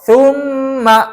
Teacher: Nun dan mim syiddah maka ini terjadi gunah yang paling sempurna di mana keluar bunyi gunahnya di hidung di Al khaisyum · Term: gunah Akmal